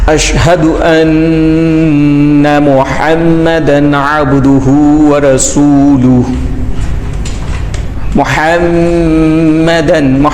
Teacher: یہ جو میم پر شد ہے وہاں پر ہم غنہ کر رہے ہیں، تو وہ حاصل ہوتا ہے ناک کے بانسے سے. ناک کا یعنی کہ یہ شروع والا حصہ، ناک کی جڑ بھی کہتے ہیں، یہ والا حصہ.